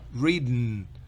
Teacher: Una E muy pequeña, muy apenas perceptible.